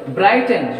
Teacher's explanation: stress is on their first syllable